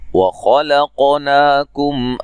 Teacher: खा को मोटा अदा करेंगे। क़ाफ पे क़लक़ला करेंगे। क़ाफ को हिला के पढ़ना। ना मद्दे असली है।